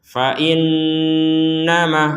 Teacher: Ada nun bertasydid, maka kita dengungkan.